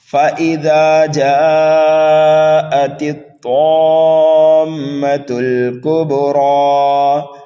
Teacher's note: الف مدہ کے بعد میں سکون لازم آنے کی وجہ سے یہاں پر جو مد ہوگا وہ مد لازم ہوگا، اور مد لازم کو 3 الف کے برابر کھینچ کر کے پڑھا جاتا ہے · حرف طا کو پر پڑھنا ہے، یہ مستعلیہ میں سے ہے